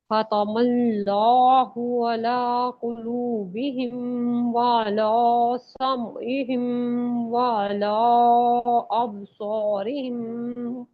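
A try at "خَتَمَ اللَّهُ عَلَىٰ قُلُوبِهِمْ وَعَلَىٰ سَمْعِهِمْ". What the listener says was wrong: वाला अला अला लाम मोटा नहीं होगा ना खतम अल्लाहु अला कुलूबिहिम व अला समइहिम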